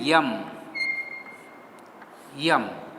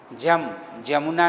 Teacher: इसका प्रयोग है, जैसे आप हिंदी में लिखते हैं यम, यम, तो जो य शुरू में आता है, हिंदी में भी आप देखेंगे बहुत सारे हिंदी भाषी इसको यम न कह कर के जम बोलते हैं